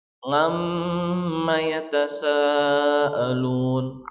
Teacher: Bahkan orang-orang kampung mereka memang tidak bisa mengatakan ain, mereka mengatakan n dan g, ngan.